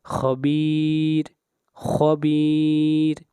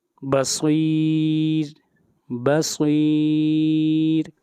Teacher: را کو باریک پڑھنے کی تیسری صورت یہ ہے، را جب ساکن ہو اور اس سے پہلے یا ساکن ہو، را جب ساکن ہو اور اس سے پہلے یا ساکن ہو، جیسے خبیر، خبیر۔ یہاں پر را ساکن ہے، اس سے پہلے یا ہے اور یہ ساکن ہے، اس لیے اس را کو باریک پڑھیں گے